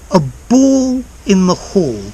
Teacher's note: So dark L goes to W